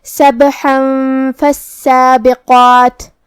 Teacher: اخفاء کا معنی ہے چھپا دینا، تو ہم یہ تنوین کو چھپاتے ہوئے لیکن غنہ کے ساتھ یہ حکم کو ادا کریں گے